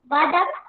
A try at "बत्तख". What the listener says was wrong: बदक बेटा आप लोग बदक बदक मत बोलो, बत्तख आधा ता भी लगा हुआ उसमें, बत्तख जो आधा ता है उसको हम लोग भी अंदर ही बोलेंगे बत्तख, है ना।